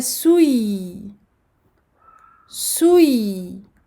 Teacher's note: Donc on donne au ya son temps de rakhawah, écoulement du son.